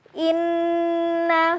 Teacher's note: Kita kembali lagi ke ayat 54, di lafaz inna, inna akan terjadi kaidah dengung. Inna, suaranya dialirkan dulu ke hidung, kemudian dilafazkan.